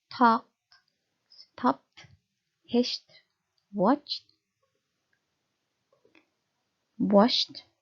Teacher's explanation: Nah, jadi bunyi-bunyi keh, peh, sh, ceh, sh itu adalah bunyi-bunyi voiceless. Ketika akhiran ed ini menempel di bunyi voiceless, maka ed itu harus Anda ucapkan menjadi bunyi teh ya